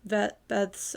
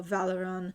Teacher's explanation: Another problem that I noticed within the recording was my labiodental b sound. And all of the recordings I go v, so like bez.